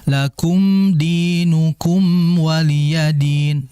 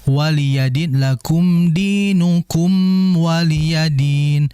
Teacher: Karena sebab mim dan wau ini makhrajnya sama, sama-sama di bibir. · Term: mim izhar syafawi